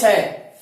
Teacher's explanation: दूसरा श है, इसका नाम है मूर्धन्य श। इसका उच्चारण स्थान मूर्धा है, इसलिए इसे मूर्धन्य श कहते हैं